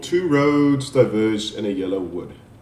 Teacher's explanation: meaning the it has if I can say four feet and each foot consists of an unstressed syllable followed by stress syllable